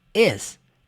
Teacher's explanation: Você não fala is com som de s. Não, é som de Z. É leve. Is.